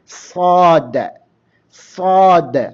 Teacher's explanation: ഒരു തക്കാർ ഒരു കുഴി ഉണ്ടാകും തൊണ്ട ഇടുങ്ങിയതായിരിക്കും അപ്പോ അതാണ് തഫീം അപ്പോ സ്വാദ് വായ നിറച്ചുകൊണ്ട് പറയണം സ്വാദ് ശബ്ദം മേലോട്ടാണ് ഉയരുക നേരെ കുബ്ബത്തുൽ ഹനക്ക് നേരെ അണ്ണാക്കിലേക്ക് ഉയരും